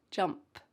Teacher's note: Here we have a light P at the end of jump. Jump. Don't forget that sound.